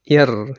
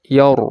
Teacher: Tafkhim, kita bulatkan mulut, yar gitu.